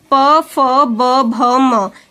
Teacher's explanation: ओष्ठ, मतलब होंठ, लिप्स। प वर्ग का उच्चारण स्थान होंठ होता है। इनकी ध्वनि होंठ से निकलती है।